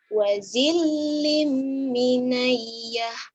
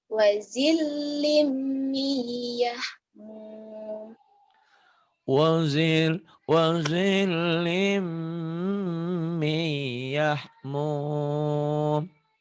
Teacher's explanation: Idgham itu memasukkan sesuatu kepada sesuatu, diidghamkan. Ini huruf nun matinya diidghamkan, dimasukkan ke iya. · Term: idgham biguna